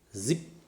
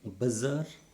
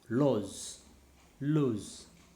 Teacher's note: Now the sound Z is described as alveolar voiced fricative.